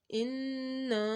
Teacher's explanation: ان کے اوپر گنہ اور الف سے پہلے زبر آ رہا ہے تو الف مدہ ہو رہا ہے